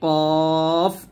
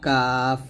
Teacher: কফ মোটা করতে হবে কফ আর কাফটা পাতলা করতে হবে